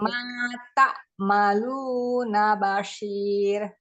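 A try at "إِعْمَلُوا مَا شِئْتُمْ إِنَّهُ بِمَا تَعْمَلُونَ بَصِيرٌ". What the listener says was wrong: Ainnya masih kurang geser.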